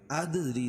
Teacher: ادری دال پر قلقلہ اور را کے نیچے زیر ہے تو را کو باریک پڑھیں گے